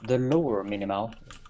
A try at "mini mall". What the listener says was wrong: Sounded like minimal instead of mini mall.